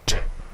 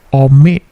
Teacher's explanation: T-nya juga memantul, omit